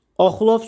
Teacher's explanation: Oxlov sözündə o qalındır, açıqdır, dodaqlanandır.